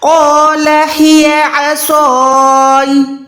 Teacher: सबसे पहले तो कौफ को लंबा भी करना है और मोटा भी करना है। कौफ लिज़बर कौ है, का नहीं है।